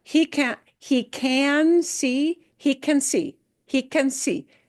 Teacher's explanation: The can gets reduced. It gets cut real short. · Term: reduction